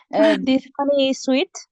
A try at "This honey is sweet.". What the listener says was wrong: Is remember that this is not oh, it's huh.